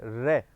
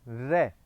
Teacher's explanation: रे एक ऐसा वर्ण है जिसके उच्चारण में वर्णमाला में हमारी जीभ मूर्धा के पास जाएगी और मूर्धा के पास जाकर के थोड़ी सी कंपन करेगी, इसलिए इसको प्रकंपित कहा जाता है। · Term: प्रकंपित व्यंजन